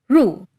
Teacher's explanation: An R made with only the front of your tongue, curved up so that it almost touches your hard palate, making a buzzing sound up against it